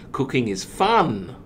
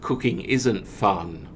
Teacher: cooking is fun with a rising intonation to show positive attitude or you might say in the negative cooking isn't fun with the falling intonation